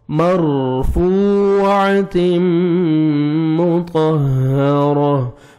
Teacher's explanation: فو پہ آپ نے لپس کو راؤنڈ میں لے کے جانا ہے تاکہ اچھی طرح واو ادا ہو